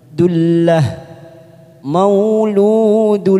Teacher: Dullah, karena kita waqaf di sini ada tanwin, ada dhamma tanwin bertemu dengan huruf lam yang bertasjid, hanya masuk tanpa mendengung, namanya bacaan idgham bila gunnah